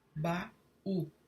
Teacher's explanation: Temos aí sempre duas vogais em plena sonoridade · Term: hiato